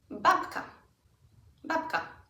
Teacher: K doesn't change. So the B becomes more of a P.